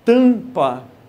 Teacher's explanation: Você vai visualizar o seguinte, sempre que a letra M aparecer ao final de sílaba, M no final de sílaba, ele não tem um som próprio. Ele tão simplesmente vai nasalizar a vogal anterior.